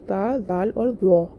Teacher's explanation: जब जीभ का एक हिस्सा ऊपरी सामने के दांतों के भीतरी किनारों को छूता है, तब ये अक्षर उत्पन्न होते हैं। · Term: हुरूफ-ए-लिसाविया